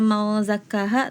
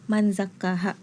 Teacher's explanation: ikhfa ausat di surat Asy-Syams ayat ke-9 yang harusnya mau zakkaha tapi tadi masih terdengar man zakkaha begitu